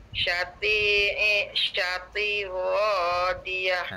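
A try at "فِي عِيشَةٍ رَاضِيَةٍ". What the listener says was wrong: Okey, lepas sya tu huruf apa cik? Ta kasratin. Dia kena combine dengan ra ni. Jadi bacaannya tirra. Tirro. Tirra.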